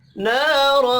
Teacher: را کو زبر کی وجہ سے پر پڑھنا ہے · نا الف مدہ ہے ایک الف کے برابر کھینچ کر پڑھیں گے